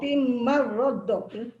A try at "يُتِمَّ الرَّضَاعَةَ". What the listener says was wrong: tu betul, tapi dot jangan tekan lagi. Kalau tekan yutimma radda jadi dua sabdu pula. Ra satu sabdu, dot satu sabdu. Jadi yutimma radha'ah.